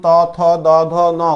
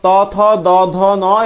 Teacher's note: ত থ দ ন এগুলো হচ্ছে দন্তমূলি